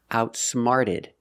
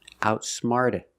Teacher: The t changes to a fast d sound.